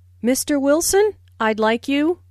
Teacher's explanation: Notice the rising intonation on Mr. Wilson, which is used to address someone. Listen for the D in I'd like.